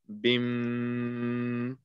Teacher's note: you have to apply a ghunna because iqlab is meme sound with a ghunna. So instead of reading bim, we're actually going to read bim like that.